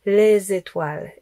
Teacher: Donc le z, il va avec étoile. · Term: liaisons